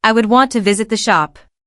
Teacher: Want and shop are emphasized in this statement whereas the other words are said quietly and rapidly.